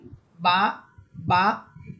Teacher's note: বা দুই ঠোটের ভিজা অংশ থেকে স্বাভাবিকভাবে এক আলিফ টানিয়ে উচ্চারণ করতে হবে · এই বা হরফটা দুই ঠোঁটের ভিজা অংশ থেকে আসবে। ভিজা অংশ বলতে আমরা সবসময় ঠোঁট যখন মিলাই, মিলানোর পর দেখেন আমাদের ঠোঁটের ভিজা অংশটা মিলিত হয়ে থাকে, একটার সাথে আরেকটি লেগে থাকে।